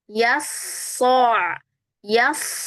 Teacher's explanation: Ketika th shadnya fathah kemudian geser ke ain pindah ke ain maka pangkal lidahnya harus langsung turun sehingga ainnya jadi tebal ya